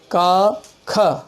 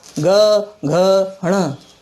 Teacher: वर्गीय व्यंजन में पहला और दूसरा वर्ण आघोष होता है, पीछे की तीनों ध्वनियाँ सघोष होती हैं। यानी क्रम बनेगा अल्प प्राण 1, 3, 5, महाप्राण 2 और 4, अघोष 1, 2 और सघोष 3, 4, 5।